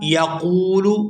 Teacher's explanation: قاف کو واو ساکن کے ساتھ ملاتے ہوئے کھینچ کر ادا کریں گے